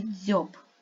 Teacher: це звук б він твердий дзвінкий приголосний